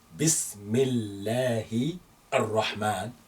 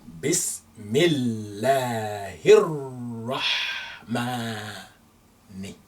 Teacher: We overlook the alif and lam. We join the he with the ra in the way we say it. So we say Bismillahir-Rahmani.